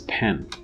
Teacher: nasalization of a previous vowel being assimilated to the following nasal. So we know that when we utter the sound na, what happens is, because it's a nasal alveolar, in the articulation of the nasal alveolar, you have complete closure in the mouth. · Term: anticipatory co-articulation